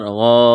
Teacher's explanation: غین الف مد زبر غا، غین کو موٹا کرنا ہے، لمبی مد ہے، 4 الف کے برابر کھینچنا ہے